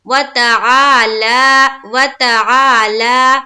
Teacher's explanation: वाव को जबर की हरकत के साथ जल्द और ता को भी जल्द। आ में अलिफ मद्दा करेंगे और लाम के ऊपर देखिए खड़ा जबर है, इसे भी एक अलिफ के बाकदर खींचना है।